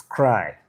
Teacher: The ka sound, voiceless velar plosive